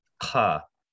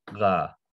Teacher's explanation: unvoiced would be ka, and voiced is ga